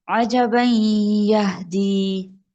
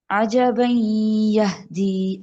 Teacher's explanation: عجبا یہدی، نون کے اندر جو سوری تنوین کے اندر جو نون ہے وہ آگے یا میں مرج ہو رہا ہے غنہ کے ساتھ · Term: ادغام